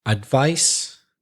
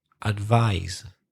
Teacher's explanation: the first word has the unvoiced sound, so the S sound. The second word has the voiced Z sound.